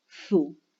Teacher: Los labios ya adoptan la forma redondeada como para decir u, aún pronunciando s. Los dos sonidos juntos, es decir, lo que hacemos es coarticular.